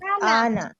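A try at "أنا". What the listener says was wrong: अना। इसको खींचकर ना नहीं पढ़ना, ये लिखने में नून अलिफ आ रहा है, लेकिन ना को खींचना नहीं है, ये ध्यान रखें। अना,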